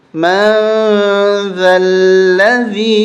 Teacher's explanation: یہاں پر ہم اخفا کریں گے، ناک میں آواز چھپا کے پڑھیں گے